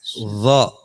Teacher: Kalau dha tekanannya besar tapi lidahnya tidak sampai keluar. Dia di gigi atas pangkalnya gigi atas.